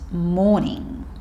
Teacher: We don't tend to make the R sound like the Americans, morning. So this is just morning or morning as he says it.